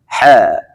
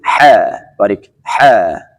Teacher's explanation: حرف ح باریک تلفظ میکنیم از وسط حلق